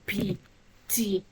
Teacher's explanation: you notice that there's complete closure and then you release